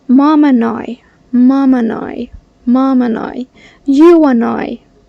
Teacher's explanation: They link the D with I, and I, or they drop it and they still do the linking.